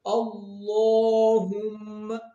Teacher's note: اللہم، اب میم مشدد آ گیا۔ میم مشدد نون مشدد میں ہمیشہ غنہ ہوتا ہے، یعنی 2 سیکنڈ کے لیے آواز جو ہے ناک سے ادا ہوگی